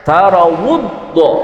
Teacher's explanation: Ulikazina taraudam takrif. Tapi ketika kita membacanya tidak dibaca lam takrifnya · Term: idgham syamsih